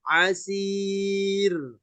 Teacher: setiap ada ya mati ketemu ro apapun bentuk rnya maka ya di situ menjadi sebab ro bakal dibaca tipis